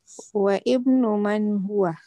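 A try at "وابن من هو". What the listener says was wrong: Wa-bnu. Alif is silent when there is a word before it. Wa-bnu. Wabnu alif is silent when there is a word before it.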